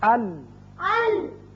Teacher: زبان کا اگلا سرا اور لام میں پہلے چاروں جو دانت ہیں ان کے ساتھ لگنے سے یہ لام ادا ہوتا ہے